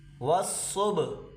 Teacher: صاد کو موٹا کریں اور با پہ قلقلہ کریں، با کو بالکل خاموش نہیں پڑھیں گے